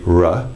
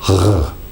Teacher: The French R is made at the back of the mouth in an area called the velum, or the velar. So what you will hear, the difference between an English R would be R, and a French R would be R.